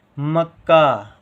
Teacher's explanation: एक का कम देर तक बोला जा रहा है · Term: आधा का